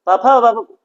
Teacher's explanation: और पफा बाबा आप बोलेंगे तो उस पफा बाबा का उच्चारण में आपका ओठ स्पर्श होता है आपस में